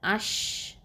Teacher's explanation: இந்த எழுத்தை உச்சரிக்கும் போது நாவின் நடுவுலேருந்து வரக்கூடிய அந்த சப்தம் வந்து வாய் முழுக்க பரவும். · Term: காற்று பரவுதல்